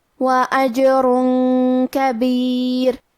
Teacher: آخری میں را پہ تنوین پیش ہے، پھر حرف الکاف ہے۔ کلمت کبیر، کاف حروف الاخفاء میں سے ہے، تو ہم یہ حکم کو غنہ کے ساتھ ادا کریں گے۔